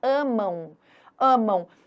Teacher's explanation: O ditongo nasal, o som sai pelas fossas nasais